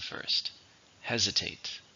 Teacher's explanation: How many syllables in hesitate? 3, stress on the first,